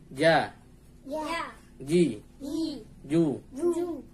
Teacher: Huruf Ja makhrajnya yaitu tengah lidah bertemu dengan langit-langit atasnya.